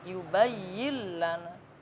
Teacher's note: Yubayyillana hanya ditekan tapi tidak dengung.